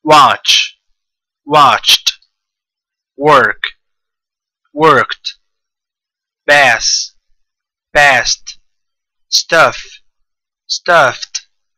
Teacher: these sounds plus Ed the Ed is pronounced as T · I'm saying the word first without the ed, and then the other one with the ed transforming to a t. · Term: unvoiced sounds